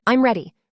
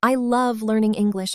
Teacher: This is falling intonation. We use it for statements, for certainty, for endings.